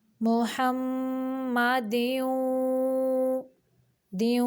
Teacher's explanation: मीम मुशद्दद का गुन्ना नाक की जड़ से निकालेंगे · मीम को निकालते हुए दोनों होंठों को गोल करेंगे क्योंकि मीम पेश मुँह है तो पेश की आवाज़ के वक़्त दोनों होंठों को गोल करना होता है।